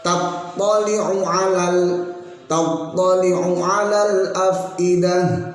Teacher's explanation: tattali'u nya pendek, jadi langsung tattali'u 'alal afidah, bukan allati tattali'u 'alal afidah, karena masih mikir sehingga dipanjangkan, juga tidak boleh langsung di sini.